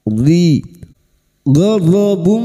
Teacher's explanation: huruf dhad tapi lidah nempel pada gigi geraham atas, boleh kiri boleh kanan